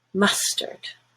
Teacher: mustard all relaxed in the middle of your mouth